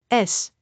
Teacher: A common mistake is confusing S with Z. Make sure to pronounce S as a clear, voiceless sound without vibration.